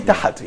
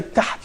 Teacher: when you say tahat, here you're putting a vowel, which probably called fatha. So you're making tahat.